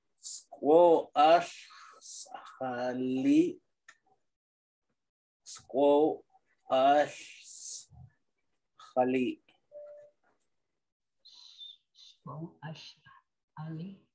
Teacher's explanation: You don't pronounce the H.